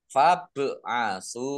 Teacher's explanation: Fab'asu bak sukun bacaan kolkolah dibaca memantul ditampakkan pantulannya